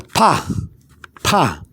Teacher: when you pronounce the pa or the a sound it should go up like a stress